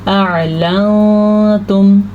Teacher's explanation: تو ہم نون ساکن کی آواز کو یہاں بھی چھپا دیں گے کیونکہ دال حروف اخفا میں شامل ہے